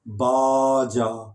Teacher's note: اگر ہم اس کو لمبا کر دیں باجا تو وہ باجا بن جائے گا جو بجایا جاتا ہے